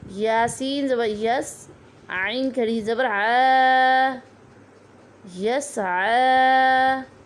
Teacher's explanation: کھڑی زبر کو ایک الف کی مقدار لمبا کر کے پڑھیں گے